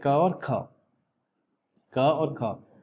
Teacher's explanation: क वर्ग जो है उसका उच्चारण स्थान कंठ होता है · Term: कंठ ध्वनि